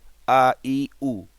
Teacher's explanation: হলকের শুরু থেকে মানে কণ্ঠনালীর শুরু থেকে উ উচ্চারিত হবে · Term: হামজা